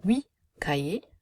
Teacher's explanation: we're dropping a final T sound